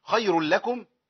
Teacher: النون عندي التنوين هنا ما يبانش خالص